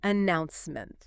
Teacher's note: You really have to lean your vocal weight into that middle syllable.